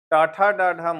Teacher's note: ट ठ ड ढ मुर्धा से